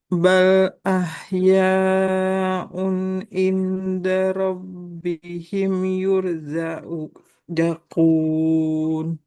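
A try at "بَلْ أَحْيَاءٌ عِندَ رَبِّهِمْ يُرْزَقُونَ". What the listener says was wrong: Jangan diulang dari zakun ya. Yurzakun. Nggak boleh dihilangkan awalnya.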